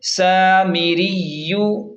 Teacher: زیر می، را یا زیر ری، یا پیش یو، سامری یو، یہاں را کو باریک پڑھیں گے کیونکہ را کے نیچے زیر ہے